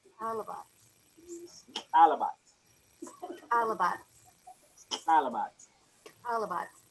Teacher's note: Put your tongue at the top of the mouth and put the air out the sides. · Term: running man